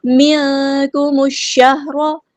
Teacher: میم کو ہم نے شین کے ساتھ ملا دینا ہے، حمزۃ الوصل ہمارا ڈراپ ہو جائے گا